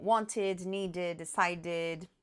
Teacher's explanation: São os que já terminam com T e D são pronunciados com ID. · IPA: /ɪd/